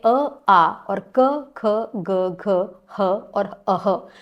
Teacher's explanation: कंठ में आते हैं अ, आ और क, ख, ग, घ, ह और अः। तो ये इनका उच्चारण स्थान है कंठः